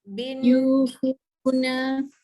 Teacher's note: Bin tu dengungkan sebab ada nun sabdu